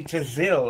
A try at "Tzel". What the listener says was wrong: Zell. Zell. just a Z. It's the T is silent. Because it is. It's Hebrew for shadow.